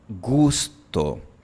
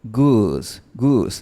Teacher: En cambio, en inglés, cuando tú dices go, go, la lengua está en una posición un poquito más adelantada.